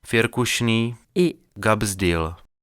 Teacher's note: les vélaires K et G de Firkušný, et Gabsdil